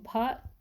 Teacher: भा जो है स्पर्श घोष महाप्राण और ओष्ठ्य व्यंजन है